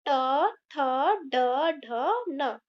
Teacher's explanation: ट वर्ग का उच्चारण मूर्धा से होता है।